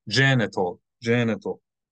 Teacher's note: the middle syllable is not accented